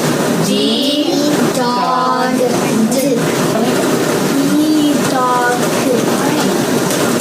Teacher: The D sound is blocked by the teeth and tongue. The D sound is voice, and it is clipped.